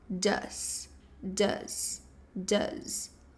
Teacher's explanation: Mas na verdade o does ele pronuncia como um d, ok? E levemente um som de Z no final